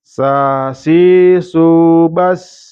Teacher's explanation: tempatnya di ujung lidah berhadapan dengan bagian atas gigi seri depan bawah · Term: Huruf sin